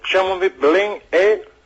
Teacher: Despois, o E seguinte, ese E pronunciase como I, eu e tú, ok? Ah, non, é o verbo, entón é un E aberto.